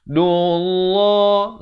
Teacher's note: Lafz jalalah dibaca dengan tebal 2 harakat.